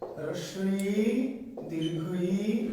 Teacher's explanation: হ্রস্ব ই দীর্ঘ ই এই দুটিকে বলা হয় তালব্য স্বর, তালব্য স্বরধ্বনি, উচ্চারণ স্থান তালু।